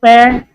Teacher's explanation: तो पे और फे का उच्चारण कहां से होगा बेटा? ओष्ठ से होगा।